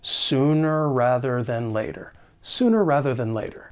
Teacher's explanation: That final R sound in sooner is going to overlap with the beginning R sound in rather. And it just allows us to make a very smooth transition from one word to the next. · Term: co-articulation